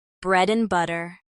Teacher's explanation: and often becomes N in phrases like bread and butter